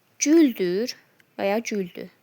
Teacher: şəxsin şəkilçisi tələffüz zamanı R samitini itirir